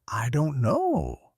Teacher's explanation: With rising intonation, it shows doubt, humor, or playfulness.